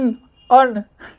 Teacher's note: न का भी आधा जो भाग है वो नासिका से ही निकलता है